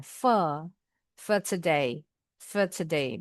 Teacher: Kalau orang Inggris for r-nya enggak kedengaran.